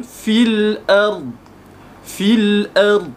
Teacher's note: Okey, tapi ada keadaan juga dia perlu kita menjangkau atau melompat bacaan daripada huruf yang berbaris bawah dan tidak membaca pada huruf ya yang mati tersebut, kerana selepas ya itu ada hamzah wasal dan selepasnya pula ada huruf yang berbaris mati ataupun sabdu